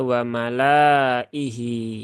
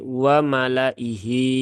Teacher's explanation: alifnya tidak dibaca Maka jangan dibaca waalaihi ya tetapi waalaihi ya lamnya dibaca pendek ya Jangan dibaca panjang Karena di situ alifnya tidak terbaca